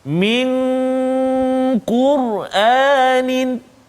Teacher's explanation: dengung dua harakat, nun mati bertemu dengan qaf